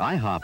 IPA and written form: ˈaɪhɒp (IHOP)